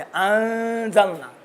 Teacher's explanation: नून कामिलन मख्फी रहता है, सदा आवाज़ जो है भीनी से निकलती है। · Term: इख्फा